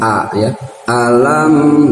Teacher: A-nya itu harus terasa di pangkal tenggorokan paling bawah ya. Jangan alam bukan di mulut tapi di tenggorokan paling bawah A ya.